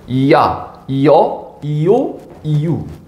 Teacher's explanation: 이 야를 풀어서 발음하면 이야, 그러니까 반모음 이 플러스 아인 겁니다.